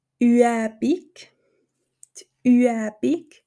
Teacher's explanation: das Ü und das E die zwei Vokale werden getrennt voneinander betont